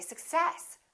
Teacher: we stress the second part and we say success